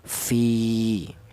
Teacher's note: Fi ini dipanjangkan gara-gara ada hurufnya mad tabi'i yang berupa ya ini memenuhi syarat, yaitu berupa ya mati yang didahului huruf yang berharokat kasroh, dipanjangkan 1 alif ya. 1 alif itu sama dengan 2 harokat atau 2 ketukan